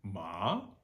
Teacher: second tone is the Scooby-Doo tone low to high Rising